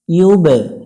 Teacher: বা অক্ষরের উপরে সুকুন আছে প্রতিধ্বনি সৃষ্টি করতে হবে অর্থাৎ কলকলা করতে হবে